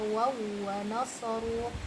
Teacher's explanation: Ini wajib kita idghamkan, wajib kita masukkan waw yang pertama ke waw yang kedua, seperti kita bacanya dengan tasydid